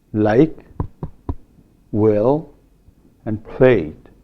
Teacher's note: So we have a velarized l and a voiceless l in addition to the normal l.